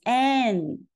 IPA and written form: æn (an)